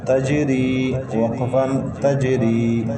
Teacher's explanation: ساکن حرف ایک مرتبہ اپنے سے پہلے اور متحرک ہونے سے مل کر پڑھا جاتا ہے. جیم حروف قلقلہ میں سے ہیں، پہلے سے ساکن ہے، اس پر قلقلہ کیا. · را کے نیچے زیر ہے، را کو باریک پڑھیں گے. جیم ساکن ہے.